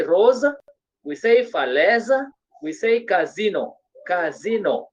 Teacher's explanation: when letter s is appearing between two vowels, the sound becomes what? Z.